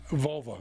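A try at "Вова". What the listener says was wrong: I don't think there's an L there. It's not Volva. It's Vova.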